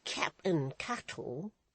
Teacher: with a sharp stress on the first syllable of the captain's name